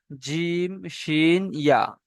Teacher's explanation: জিভের মাঝখান উপরের তালুর সাথে লাগিয়ে উচ্চারণ হয় জিম শিন ইয়া